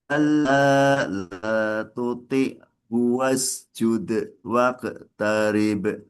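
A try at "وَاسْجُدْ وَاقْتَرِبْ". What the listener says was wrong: Jangan di space-space langsung, Mbak. Wasjud waqtarib. Seakan-akan nanti kalau wasjud waqo itu seperti qalqalah kubro jadinya. Bukan sugro. Wasjud jadi sugro itu tidak terdengar de, enggak. Waqo, enggak.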